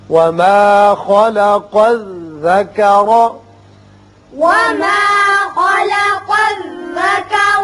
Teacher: خا پر ہوگا، قاف کو بھی پر پڑھتے ہیں. یہاں را کے اوپر زبر ہے، اس کو بھی پر پڑھیں گے.